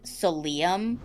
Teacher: I thought it should have been like so Liam with emphasis on the second syllable